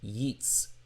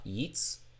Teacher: Notice the glottal stop of the shva underneath the second letter in Hebrew.